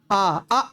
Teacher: आ बोलेंगे कहां से निकलेगा, कंठ से निकलेगा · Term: कंठ वर्ण